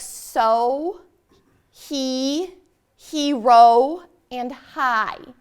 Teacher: All those had long vowel sounds, and my mouth was open at the end of the syllable or the word